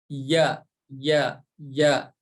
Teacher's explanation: huruf ya tempat keluarnya atau makhrojnya dari tengah lidah kita Maaf ya ini ibarat kita nempel ke tengah langit-langit atas ya